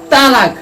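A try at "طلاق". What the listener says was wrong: না না না না না না, ওটা তো তালাক হবে না, ওটা হবে তলাক। তলাক কলকালা শেষে কলকালা হরফ কলকালা করে উচ্চারণ করে কইতে হবে, না তলাক তালাক হবে না।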